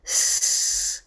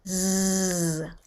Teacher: The z has a buzzing feeling in my throat. Exactly. Voiced.